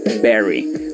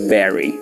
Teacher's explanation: lo hice diciendo barry juntando los dos labios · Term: be labial